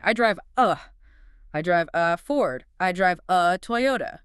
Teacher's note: Native speakers link the V sound at the end of drive directly to the article a. And the A becomes a schwa sound, a really soft whoo.